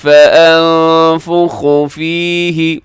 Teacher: یہاں نون ساکن کے بعد فا ہے، اخفا کیجیے گا